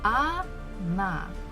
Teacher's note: So as we can see, we have O, it's one syllable, and another one is na, na. So this first letter O is not stressed. That's why I pronounce it as A.